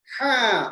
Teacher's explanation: یہاں پر تھوڑا سا آپ آواز کو پکڑنا چاہیے، ہوا کو درمیانی حلق میں روکیں گے